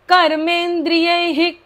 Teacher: विसर्गाचा उच्चार अर्धाच होतो पोटाला हपका बसतो श्वास बाहेर सोडला जातो